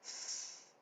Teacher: in asazi Hebrew in Germanic Hebrew we pronounce this as s